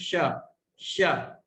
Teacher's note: जहां च वर्ग के अक्षर बोलते समय जिह्वा जाती है, वहीं पर हम जिह्वा को ले जाकर बोलेंगे श, तो उच्चारण तालव्य शकार का शुद्ध रूप में हो सकेगा।